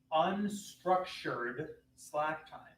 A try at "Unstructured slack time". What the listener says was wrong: You kind of went under. No, pronounce it.